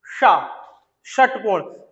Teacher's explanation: जीभ जाएगी मूर्धा तक लेकिन टकराएगी नहीं, फिर वापस आएगी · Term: मूर्धन्य